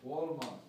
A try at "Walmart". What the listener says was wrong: You go too fast. You must slow down.